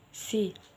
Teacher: Sedangkan voiceless yaitu ketika kita produce sound, pita suara itu tidak bergetar, hanya ada udara yang keluar dari mulut.